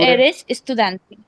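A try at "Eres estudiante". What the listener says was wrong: But तुम्हारे tone से लगा कि वो question था.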